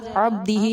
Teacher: با ساکن کنڈیشن میں ہے، حروف قلقلہ میں سے ہے، اس پر قلقلہ کیا جائے گا، ہلا کر ادا کیا جائے گا